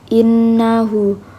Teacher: ha damir dibaca panjang sekitar dua harakat yang tidak bertemu dengan huruf hamzah · innahu nunnya dibaca gunah karena Nun bertasdid Sedangkan hannya ini dibaca Mad silah qasir R karena ha damir